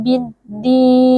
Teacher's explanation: lamnya dileburkan ke dalam huruf dal sehingga huruf dal menjadi bertasydid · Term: alif lam syamsiyah